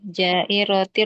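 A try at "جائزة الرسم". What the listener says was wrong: Itu ada titiknya. Ja, bukan ro, ada titiknya. Titik.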